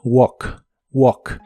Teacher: opened el verbo caminar en el presente de inglés es w la a se pronuncia como o y la l de esta palabra no se pronuncia